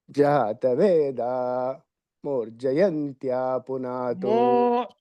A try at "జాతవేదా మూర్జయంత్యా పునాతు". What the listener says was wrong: దీర్ఘం చెబుతున్నారు కదా. జాతవేద మూర్జయంచ పునాతు. నాకు మూ అన్నట్టుగా వినపడుతున్నది సారు. జాతవేద మో